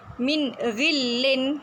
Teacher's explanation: Nun mati bertemu dengan ghin. Ghin tu huruf yang keluar daripada halki awak. Min kita baca izhar, jelas. Ghillin. Ghi tu huruf halki. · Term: izhar halki